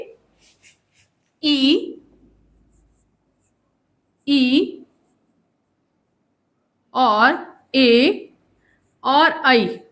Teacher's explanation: ये ऐसे स्वर हैं जिनको उच्चारण अगर हम करते हैं तो ये जो स्वर हैं वो जीभ के अगले हिस्से से प्रभावित होते हैं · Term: अग्रभाग